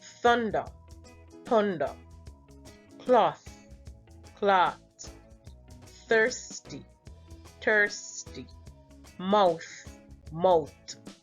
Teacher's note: the TH sound is replaced with the T sound